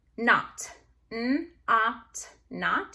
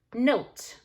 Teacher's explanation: The O goes from ah to O. Oat. With that silent E on the end, so we cross it off.